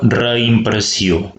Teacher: Noteu que reimpressió, la E i la I se separen, es pronuncien per separat, però no ho indiquem ni amb cap accent ni amb cap dièresi, ja que el mateix prefix serveix de separació entre les dues síl·labes.